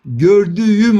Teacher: yumuşak G sesi Aslında K sesinden dönüşmüş bir sestir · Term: ünsüz yumuşaması